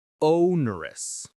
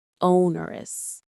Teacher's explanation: The stress is on that first syllable o.